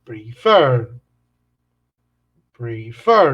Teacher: el acento va al final de la palabra